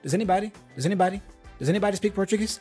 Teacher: I heard that he barely pronounces does. He pronounces it, but it's really reduced.